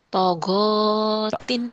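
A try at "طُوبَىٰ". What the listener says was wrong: Bukan togotin. Tonya panjang. Togu, tonya panjang. togutin, togutin.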